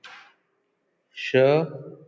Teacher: Sh is voiceless, palato alveolar fricative consonant.